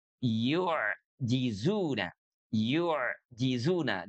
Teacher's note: Dan ini sekaligus membedakan pengucapannya dengan huruf ain. Kalau huruf ain kan dia punya sifat ee mengalir walaupun tidak sepenuhnya mengalir ya.